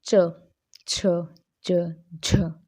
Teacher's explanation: तीसरा स्पर्श संघर्षी, मतलब दोनों का मिला हुआ रूप। जिन व्यंजनों का उच्चारण शुरू में तो स्पर्शी सा होता है और अंत में संघर्षी सा हो जाता है, मतलब पहले तो हमारा जीवा है वो किसी न किसी भाग को स्पर्श करती है हल्का सा, फिर उसके बाद हवा है वो बाहर जो निकलती है, ठीक है, कैसे, घर्षण करती हुई। · पहले तो हल्की जीवा टच करेगी, फिर उसके बाद रगड़ सी खाकर वायु एकदम से बाहर निकल जाएगी